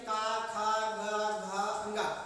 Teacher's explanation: किस किस अंग से निकलती है तो जो का वर्ग है का वर्ग की जो ध्वनि होती है वो कंठ से निकलती है